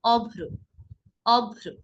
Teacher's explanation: অর্থাৎ শব্দের মাঝে বা শেষে যদি রফলা যুক্ত হয়, তাহলে যেই ধ্বনির সঙ্গে রফলা যুক্ত হয়েছে সেই ধ্বনিকে আমরা দুইবার করে উচ্চারণ করব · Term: দ্বিত্ব